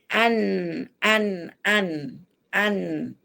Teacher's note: Ujung lidah pergi di atas gusi seri, gigi seri atas